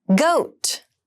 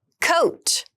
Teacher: goat has the voiced G sound and coat has the unvoiced C Sound